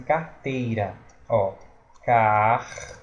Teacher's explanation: Carteira, existe uma vogal, o e uma semivogal, o i, na mesma sílaba. É um ditongo, carteira.